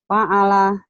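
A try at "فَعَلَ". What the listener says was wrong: Fa'ala ainnya. Itu mah orang Sunda fa'ala. Fa'ala ain. Ainnya belum keluar.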